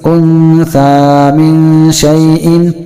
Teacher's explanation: اس لیے یہاں بھی غنہ ہوگا اور یہاں بھی غنہ ہوگا، یعنی نون ساکن کی آواز کو ناک میں لے جا کر ہم چھپا لیں گے